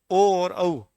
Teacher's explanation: ओ और औ, इन दोनों का उच्चारण स्थान क्या है? कंठोष्ठ है। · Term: कंठोष्ठ्य